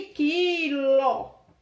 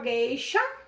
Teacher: Palavra seguida de e não houve o U, não foi pronunciado o U. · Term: dígrafo